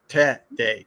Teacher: a y but t r e is T D- a y with the accent on the first syllable